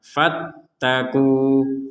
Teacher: Bertemu waw sukun, maka kita membacanya 2 harokat